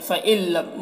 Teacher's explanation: नून को लाम से इदगाम करके पढ़ेंगे बगैर गुन्ना के, इसको इदगाम ताम कहते हैं।